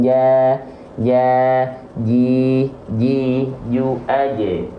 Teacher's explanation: Jadi pastikan jimnya dilafalkan ja, ji, ju, aje. Nempel tengah lidahnya.